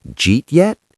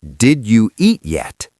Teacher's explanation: He was smashing the sounds together. The did you and eat all melted. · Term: connected speech